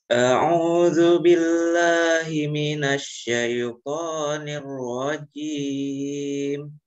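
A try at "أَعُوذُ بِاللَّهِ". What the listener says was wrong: Billah. A'udzu billahi. Bi-nya terdengar bi kasroh, la-nya terdengar a fathah. Jangan samarkan bi-nya dengan lafad lam fathah sehingga terdengar tidak sempurna. Billahi.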